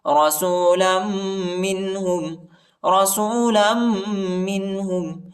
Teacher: لام کو میم کے ساتھ ملائیں گے اور غنہ کریں گے۔